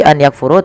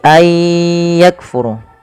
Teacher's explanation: Memasukkan bunyi nun kepada huruf setelahnya kemudian disertai dengan ghunah. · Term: idgham bighunah, idgham bi gunnah